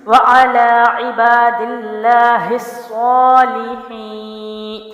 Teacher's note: یا مد کو ایک الف لمبا کریں گے